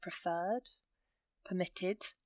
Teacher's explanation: you can hear the emphasis on the end of the word, or the base form of the word, preferred, permitted.